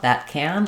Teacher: If I'm just saying it by itself, that can, I'll have the ah sound.